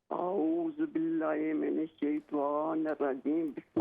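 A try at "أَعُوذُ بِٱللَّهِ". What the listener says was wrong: आऊज़ु बिल्लाहि, लंबा करें ज़रा। आऊज़ु बिल्लाहि।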